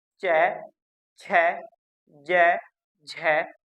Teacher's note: जैसे मैं आगे उच्चारण करता हूँ च, छ, ज, झ, तो मैं खुद महसूस कर रहा हूँ कि अल्प प्राण में हवा कम लग रही है हथेली को, बल्कि महाप्राण में हवा अधिक लग रही है। तो महाप्राण वह होगा जिसके उच्चारण में हवा अधिक निकलेगी।